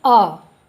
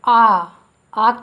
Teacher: अ के उच्चारण में कम समय लगा, इससे पता चलेगा आपको कि यह ह्रस्व है। और आ के उच्चारण में दीर्घ यानी ज़्यादा समय लगा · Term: ह्रस्व स्वर